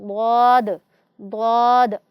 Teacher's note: ضاد کی آواز بہت موٹی، کچھ نرم اور مخرج میں طویل ہوتی ہے، یعنی جب ہم اس کو ادا کرتے ہیں تو ضاد ضاد عموماً دوسرے حروف ادا کرنے سے اس کے مخرج میں تھوڑا سا طول پایا جاتا ہے۔